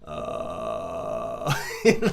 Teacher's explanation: that sound is the vocal cords uh you know pressing up against each other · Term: vocal fry